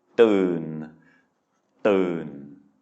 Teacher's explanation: it's a mid-tone because it is a mid-class consonant and a live syllable with that sonorant final